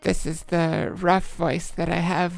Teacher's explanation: This is the rough voice that I have when I fully raise my larynx, which raises the bottom of the pitch range, but I also don't make use of the extra higher range now available. It sounds rough, since it's scraping along the very lowest pitches I can reach with my larynx raised